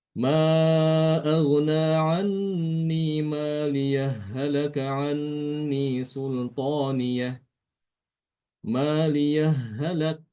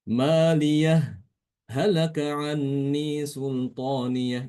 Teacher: ketika di kata maliyah berhenti sebentar tanpa mengambil nafas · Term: saktah